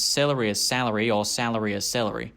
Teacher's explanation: the classic Melbourne celery salary merger where the dress and trap vowels merge before the letter L